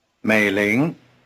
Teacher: The tones are low rising.